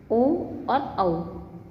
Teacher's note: कंठोष्ठ, कंठ और ओष्ठ दोनों के मिलने से